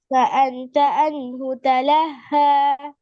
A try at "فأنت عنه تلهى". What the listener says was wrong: ஐண்ட உச்சரிப்பு பெய்துட்டு இப்ப மத்தெல்லாம் சரியா வந்துட்டு. அன்ஹு அன்ஹு அல்ல, ஐன் வளைஞ்சு வரணும். உங்களோட ஐன் பழைய ஐன் சரி, இந்த ஐன் பிழை.